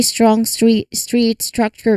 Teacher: the T sound here is unaspirated, making it blend seamlessly from the S into the R. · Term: STR cluster